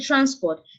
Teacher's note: you will realize that a stress has been placed on the first syllable. This is a two-syllable word.